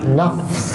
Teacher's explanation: Fa tu biar berangin sikit